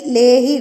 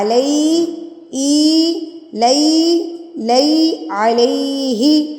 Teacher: اے نہیں لگانا, ای لگانا ہے